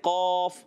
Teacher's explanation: मिसाल के तौर पर एक हर्फ का मखरज है कौफ, जब हम पढ़ते हैं कौफ, अब उसका मखरज क्या है? ज़बान की जड़ और तालु के नरम हिस्से से कौफ अदा होता है। अगर आपने यहाँ से अदा किया तो यह हर्फ दुरुस्त रहेगा।